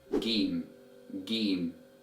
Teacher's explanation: in Egyptian Arabic dialect this letter is pronounced as game game so we give it the G sound